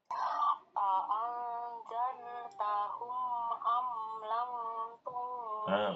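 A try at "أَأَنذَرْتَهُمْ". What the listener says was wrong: Sudah a'anzartahum dulu. Itu sudah bagus.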